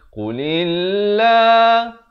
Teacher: Lafz jalalah di sini dibaca nipis. Jangan pula kita baca tebal.